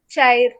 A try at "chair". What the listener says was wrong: Not chair, it is chair. Chair. There is no R. You see here, in this phonetic transcription, there is no R. You have to pronounce chair. You have to pronounce as chair. No R. You should not pronounce it chair.